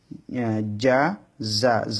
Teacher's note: যা উচ্চারণ করার সময় জিহ্বার আগা সামনে নিচে দুই দাঁতের আগার সঙ্গে লাগবে